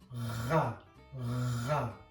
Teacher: And if I isolate that sound, that would be ra, ra. It's very much back in the throat and the sound feels very closed.